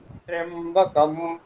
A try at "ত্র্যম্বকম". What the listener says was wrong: ত্র্যম্বকম, ত্রিয় বলার সময় উপর থেকে নিচে নামিয়ে দিতে হবে, ত্র্যম্বকম এরকম। সবাই ত্রয় বলছেন, ত্রয় নয় ত্রিয়, ঠিক আছে। মনে করুন এখানে তয় রফলা হ্রস্বইকার অকার এরকম আছে, ত্রিয়, ঠিক আছে বলুন।